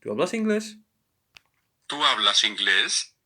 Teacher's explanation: You just have to uh, raise raise a tone, your tone at the end.